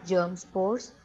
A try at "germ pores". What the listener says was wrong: Germ pores. S is not there, okay? Germ pores, then.